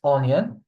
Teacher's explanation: It's the only exception in French when the OI is not pronounced wa, it's pronounced O only.